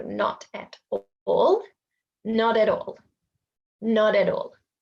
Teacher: we roll the consonant into the vowel and separate the syllable before it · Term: linking